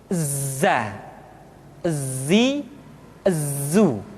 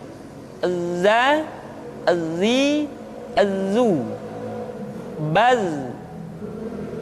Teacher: ketika kita mengucapkan huruf za, suara kita mengalir, akan tetapi nafas tidak boleh mengalir. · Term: sifat al-jahr